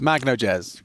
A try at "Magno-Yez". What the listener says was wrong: Magno-Yez doesn't. It sounds like an English person would say that. He's got like a Yez, but a silent J. Magno-Yez. Magno-Yez.